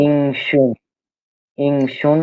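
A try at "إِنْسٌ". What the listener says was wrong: থামলে শিন হয়ে যাচ্ছে, সিন সিন, ইনসুন থামলে ইংস,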